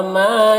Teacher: ما میں الف مدہ ہے، اسے ایک الف کے برابر کھینچیں گے۔